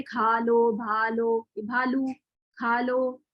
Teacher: جو دو چشمی ہاں کی آواز ہے وہ پچھلے والے حرف کے ساتھ بالکل مکس ہو کے نکلتی ہے، تو اس لیے الگ سے آواز نہیں ہوتی.